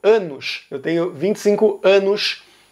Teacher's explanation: eles fazem o chiado na letra s e c é uma coisa muito comum no Rio de Janeiro